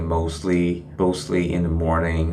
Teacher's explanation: you can notice that there is a diphthong of OA sound